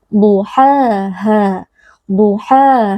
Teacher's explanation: ada dua huruf yang mirip duhha ha jadi keduanya harus berbeda huruf ha yang pertama keluar dari wasatul halq atau dari bagian tengah tenggorokan sedangkan H yang kedua keluar dari asal halq atau dari al tenggorokan kedua huruf ini keluar dari makhraj yang